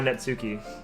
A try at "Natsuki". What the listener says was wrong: Natsuki. You just don't say the T. You just don't pronounce the T. pretty much, yeah. For our tongue, it pretty much is.